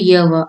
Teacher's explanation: जिन ध्वनियों के उच्चारण में हवा बिना किसी संघर्ष के बाहर निकल जाती है वे संघर्षहीन ध्वनियां कहलाती हैं